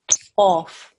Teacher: This is a qaf. It's a thick and heavy sound.